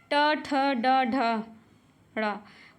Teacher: टा वर्ग जो है मूर्धन्य है